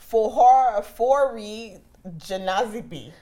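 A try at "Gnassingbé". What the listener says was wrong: I think it's Nasingbe. The G is silent. Nasingbe.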